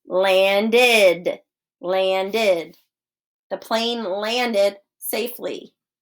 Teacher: end it sounds like this landed landed the plane landed safely so it sounds like an id but we don't spell it that way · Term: id sound